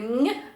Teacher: майже середньо-задня частина язика має вдаритися в піднебіння і буде звук нь